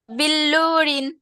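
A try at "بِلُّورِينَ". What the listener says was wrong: বিল্লু টান হয়ে যাচ্ছে আপু। বিল্লুরিন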